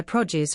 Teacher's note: Note the stress is on the first syllable.